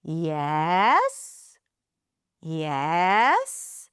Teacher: Starting low and going up. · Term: Rising intonation